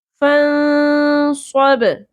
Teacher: فا کے اوپر زبر ہے، نون ساکن پہ ہم اخفا مع الغنہ کریں گے، نون ساکن کی آواز کو چھپائیں گے